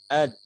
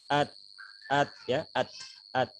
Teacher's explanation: ada di ujung lidah. Nah, nempel di pangkal gigi seri bagian atas ya, di gusi tempat tumbuhnya dua gigi seri bagian atas. Ad, misalkan sebelum dipantulkan. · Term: makhraj huruf da